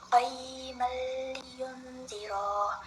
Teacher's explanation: menyembunyikan nun mati atau tanwin dengan memasukkannya ke dalam huruf setelahnya tanpa dengungan. Huruf yang dimaksud adalah lam dan ro. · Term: idgham